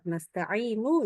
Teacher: kita wakaf maka nunnya kedengaran tapi sangat liri dan sangat cepat pendek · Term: raum